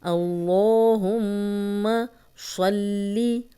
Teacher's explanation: اللہم کا لام، اس کے پیچھے زبر، تو ہم لام موٹا پڑھیں گے، 2 حرکات لمبا بھی کریں گے۔ میم پہ شد ہے تو غنہ کریں گے، غنہ ناک میں تھوڑی دیر آواز کے ٹھہرانے کو کہتے ہیں۔ اللہم صلی، صلی صوت کو موٹا پڑھیں گے، لام کو 2 بار پڑھیں گے، اس پہ شد ہے، شد والا حرف 2 بار پڑھا جاتا ہے۔